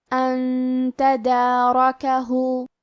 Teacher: ان تدارکہ. حرف را پہ زبر ہے تو ہمیں را کو موٹی آواز میں پڑھنا ہے